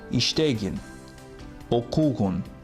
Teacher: in their pronunciation, we should put the stress on the previous syllable, not on them.